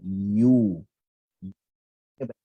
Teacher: Tengah-tengah lidah sentuh langit-langit atas dan mulut macam orang minum air dengan straw.